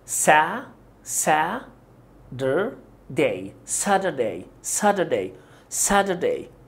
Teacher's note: هتكون flap T لانها بين two vowels ال A وال U، فهننطقها ده ده خفيفة كده